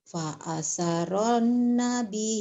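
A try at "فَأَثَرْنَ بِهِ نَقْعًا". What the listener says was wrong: Fa'asar Nabi, bukan Fa'asaro, Fa'asar Nabi. Fa'asar Nabihi naq'a.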